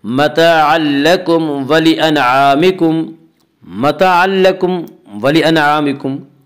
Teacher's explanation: یہاں تنوین کے بعد لام اس لیے یہاں پہ ادغام بلا غنہ ہوگا، جسے ادغام تام بھی کہتے ہیں۔